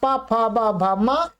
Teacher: ये सभी ओष्ठ्याः माने ओष्ठ स्थानीय हैं। माने इनका उच्चारण मुख्य रूप से ओठ से उत्पन्न होता है। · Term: पवर्ग